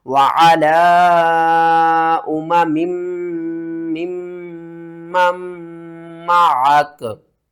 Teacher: यहाँ पर लिखने में 1 मीम है, पढ़ने में 2 बार पढ़ी जाएगी। गुन्ने के साथ पढ़ेंगे